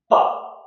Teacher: అంటే పెదవుల వెనకాల సౌండ్ అబ్స్ట్రక్షన్ జరిగింది. ఎప్పుడైతే పెదవిని ఓపెన్ చేశామో, లిప్స్ ఓపెన్ చేశామో, సౌండ్ బయటకు వచ్చింది.